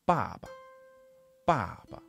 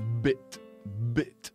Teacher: they are largely unvoiced in Chinese whereas they are voiced in English